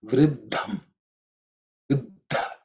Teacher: The first letter in the consonant is third letter in the tavarga. But the second letter in the compound consonant is the fourth letter in the tavarga, which is aspirated